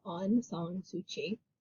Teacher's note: Her name is Aung San Suu Kyi, and the K makes kind of a ch sound here